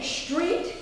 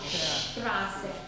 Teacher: Street is the tip of the tongue in English. Straße is the whole tongue.